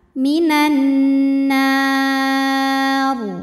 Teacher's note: Jika berhenti, ra-nya ini disukunkan dan dibaca secara tafkhim. Karena sebelum huruf ra yang disukunkannya ada huruf yang barisnya fathah.